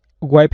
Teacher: He just left off any sound whatsoever on the end of that verb.